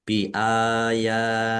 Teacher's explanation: Mat tobi'i dibaca panjang 2 harokat. Allahnya dibaca tipis karena harokat di depannya kasroh.